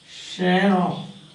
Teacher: this R is pronounced here because immediately followed by a vowel